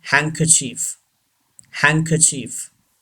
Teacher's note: यहाँ याद रहे कि एन की आवाज़ उस तरह से नहीं आएगी जैसे नॉर्मली न का साउंड है, और आर नॉट प्रोनाउंस्ड. आर भी नहीं प्रोनाउंस्ड होगा यहाँ पे.